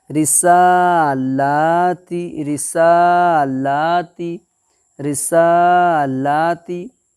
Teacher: رسالاتی رسالاتی رسالاتی، یہاں پر الف مد سین کے اوپر کھڑا زبر ہے کی حرکت ہے، اس لیے الف کھڑا زبر کو ایک الف کے برابر کھینچ کر کے پڑھیں گے، لام کے اوپر کھڑا زبر کی حرکت ہے اس لیے یہاں پر بھی ایک الف کے برابر کھینچ کر کے پڑھیں گے